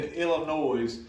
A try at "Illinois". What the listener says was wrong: The S is silent. The S in Illinois is silent. You're saying Illinois. It's Illinois. There's the S is silent. No, Illinois.